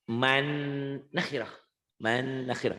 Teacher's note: Nanya pendek. Nunnya ditahan karena idgham bigunnah.